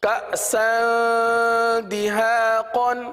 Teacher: تنوین کے بعد دال حرف آ رہا ہے، اور دال حروف اخفا میں سے ہے، لہٰذا تنوین پر اخفا کا قاعدہ ہوگا، یعنی غنہ کر کے پڑھیں گے